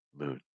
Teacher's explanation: make sure you don't add a vowel before the end